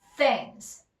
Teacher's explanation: th 혀가 나오고요. 혀가 나왔다가 이빨 사이에서 들어가면서 목구멍에 소리가 들어가지 않는 무성음 상태에서 나오는 게 여기서의 TH예요